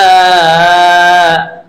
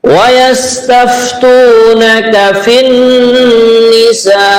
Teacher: Sa ini aslinya mad wajib muttasil empat harakat lah. Karena waqaf maka bisa dipanjangkan sampai enam harakat. Mad arid ini sukun namanya.